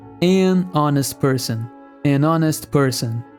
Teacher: person apesar de honest começar com a consoante H nesse caso o h não é pronunciado fazendo com que a palavra inicie com o som de o vogal